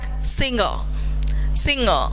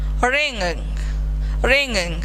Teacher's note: in such a cases you should not write g sound, you have to only keep ng sound.